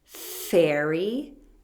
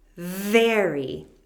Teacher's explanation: The F sound is voiceless, no vibration.